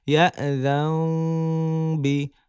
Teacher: নুন সাকিনের পরে ইকলাবে হরফ বা আসছে, মিম দ্বারা পরিবর্তন করছি।